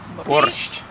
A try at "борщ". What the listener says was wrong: just added the T.